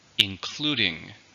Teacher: including three syllables stresses on the second